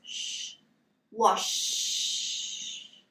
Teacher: Okay, you shouldn't be able to feel any movement in your throat. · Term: unvoiced sound